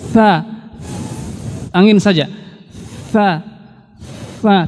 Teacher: Dia hanya ada anginnya, ada hamesnya. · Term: huruf sa